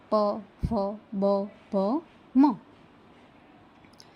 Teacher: બંને ઓઠો એકબીજાનો સ્પર્શ કરીને હવાને રોકે છે એવા વ્યંજનો જે ઓષ્ઠ્ય કહેવાય છે.